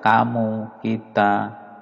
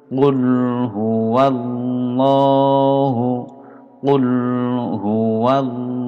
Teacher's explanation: qaf ini agak masuk ke tenggorokan. Qul, jadi berbeda dengan kaf biasa.